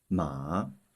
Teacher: And for this character, it's the third tone. The sound will first go down, then rise up.